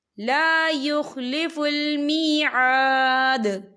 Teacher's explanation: وقف کی صورت میں دال ساکن ہو جائے گا اور اس پر کلکلا ہوگا